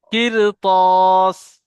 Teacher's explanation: র কে পুর করে পড়তে হবে